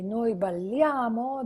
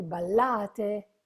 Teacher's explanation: You say, noi balliamo, the emphasis is in a.